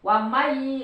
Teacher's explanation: Karena ini idgham kan dimasukkan suara nun ke iya, jadi lembur, enggak terdengar nunnya. Langsung terdengar iyanya. Wa may, tapi ditahan, menunjukkan bahwa ada huruf yang masuk gitu.